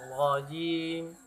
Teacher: Rajim, ra tafkhim, ya tebal.